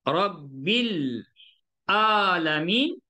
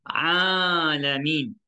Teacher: Dia kena ain di tengah tekak, dia mesti keluar kepada mulut, bukan pada hidung. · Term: huruf ain